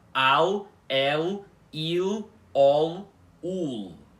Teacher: o som da letra L, ou L, na língua balborana, nunca vai mudar para W. Ela nunca vai ficar com o som de U semivogal. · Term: fonema L